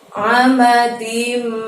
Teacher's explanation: Ada mim di depannya, tanwin bertemu mim, idgham biguna, maka harus dengung selama 2 ketukan ya. Amadim, seperti itu.